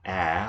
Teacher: the long a with that mark is brighter sounding